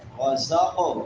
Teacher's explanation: قاف حروف قلقلہ میں سے اور موٹے حروف میں سے بھی قلقلہ بھی کریں گے، اس کو ہلا کر بھی پڑھیں گے اور موٹا بھی کریں گے